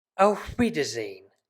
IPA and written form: aʊ̯f ˈviːdɐzeːn (Auf Wiedersehen)